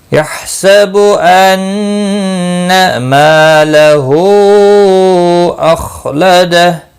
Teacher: ما الف مدہ ہے، یہاں پر مد منفصل ہے، 3 الف کے برابر کھینچ کر پڑھیں گے۔ · خا مستعلیہ ہے، پر پڑھا جائے گا